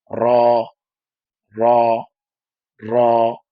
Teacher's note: র জিহ্বার আগার পিঠ তার বরাবর উপরে তালুর সাথে লাগিয়ে পড়তে হয়। এই পিঠ বলতে আবার উল্টা পিঠ না। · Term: র এর মাখরাজ